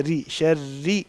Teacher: پیچھے والا جو حصہ ہے زبان کا اس کو اونچا رکھیں گے تو موٹی رہے گی نا را، تو اس کو نیچے کر لیں گے تو ری آواز آئے گی، جیسے انگلش کی ہوتی ہے ہمارے ہاں. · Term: باریک